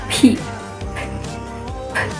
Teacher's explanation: P, lower lip, touches upper lip, and the air stream is stopped firmly. When it's released, there is plosive, P, like that.